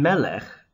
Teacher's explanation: do you notice that it's accented on the first syllable